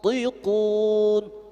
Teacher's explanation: tafkhim karena huruf ta huruf isti'la